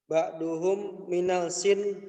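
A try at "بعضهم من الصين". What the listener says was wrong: Bisod, laisa bisin. Bisod. Sod.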